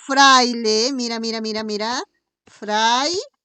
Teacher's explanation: Hay diptongo? Sí, pero no creciente, porque primero está la vocal abierta y después está la vocal cerrada. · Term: Diptongo de tipo decreciente